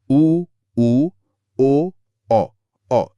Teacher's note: वृत्त मुखी। जिसमें होठ पूरी तरह गोल हो जाते हैं।